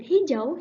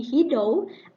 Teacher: And in the word hijau, he pronounced it to be hidau, omitting the sound J in the middle position of the word and changing the sound J to D.